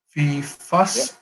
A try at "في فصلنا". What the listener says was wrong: Is it لني, yeah? Well, there's a noon and an alif. Is that how we pronounce the noon and the alif? Lini?